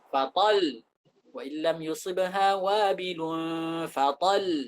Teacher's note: Ada dua lamnya. Agar pendengar bisa mendengar ada dua lam di sini, maka kita berikan tekanan.